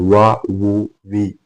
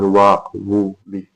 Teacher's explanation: രൂപത്തിലാണ് വാവ് ഉണ്ടാവുക നമ്മളഈ ചിത്രത്തിൽ കാണുന്നതുപോലെ ചുണ്ട് ഇങ്ങനെ കൂട്ടി പിടിക്കുക എന്നാൽ കാറ്റ് പുറത്തോട്ട് വരാനുള്ള സ്പേസ് ഇട്ടുകൊണ്ട് ചുണ്ട് ഇങ്ങനെ ചുരുട്ടി പിടിക്കുമ്പോഴാണ് വ ഉണ്ടാകുന്നത്